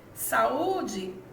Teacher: saúde quanto tonicidade ela é uma palavra paroxítona porque a penúltima sílaba é a mais forte